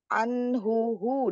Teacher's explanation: Anh huu domah domahnya disempurnakan ee mencucuk ya hu didorong dari pangkal tenggorokan